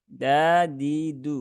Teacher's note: dal ini dia letaknya ada di ujung lidah gusi ya, gusi atas. Maka dadidu ya, bukan da ya.